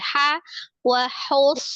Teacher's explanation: Sempurna kan di H-nya itu dia tetap di tenggorokan tengah dulu, jangan ditenggorokan atas karena dia langsung mau naik gitu kan. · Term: H-nya tipis